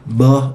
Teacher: an example of a really short voice onset time